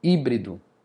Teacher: A sílaba tônica é a antepenúltima.